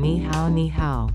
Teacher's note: Ni is the third tone, and hao is the third tone.